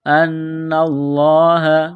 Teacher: نون مشدد پر غنہ کریں گے، آواز ناک میں چھپائیں گے